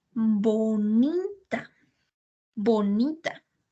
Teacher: Nosotros podemos percibir que la sílaba tónica está en la sílaba ni.